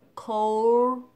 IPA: koʊld